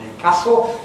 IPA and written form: Newcæstle (Newcastle)